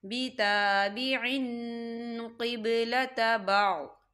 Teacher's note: یہاں دیکھیں بِتَابِعٍ، عین کے نیچے تنوین ہے اور تنوین کے بعد قوف آ رہا ہے، اور قوف جو ہے اخفا کا ورڈ ہے، تو یہاں پر اخفا ہوگا، ہم تنوین کی آواز کو ناک میں چھپائیں گے.